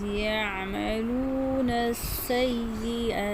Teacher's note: عین گلے کے درمیان سے کرنا ہے